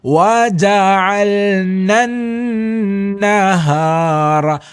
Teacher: ശദ് ഉണ്ട് അത് നമ്മൾ എന്ത് ചെയ്യണം ഈണം നൽകിക്കൊണ്ട് വേണം ഉച്ചരിക്കേണ്ടത് എന്നുള്ളതാണ് സ്വരഭംഗിയോടുകൂടി തരിമൂക്ക് ഉപയോഗപ്പെടുത്തിക്കൊണ്ട് ഉച്ചരിക്കുക